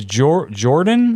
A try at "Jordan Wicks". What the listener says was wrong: It's not Jordan. It's a Yor. But it looks like Jordan.